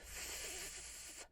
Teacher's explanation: So the F is a whisper sound because you don't use your voice when you hear that sound. So when you say f, you don't use your voice.